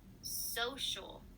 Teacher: So the so gets stressed.